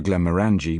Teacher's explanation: stressing the third syllable of the name